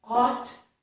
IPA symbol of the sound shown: ɔt